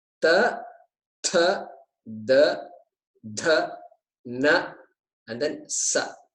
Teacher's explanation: So it's a dental, dantyaha, it's called dantyaha, because the tip of the tongue is touching that front teeth, and sometimes other teeth also